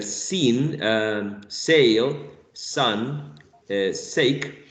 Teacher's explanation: we're using the tip of the tongue the tip of the tongue pressed against their alveolar Ridge okay alveolar Ridge alveolar Ridge and that's an area that's right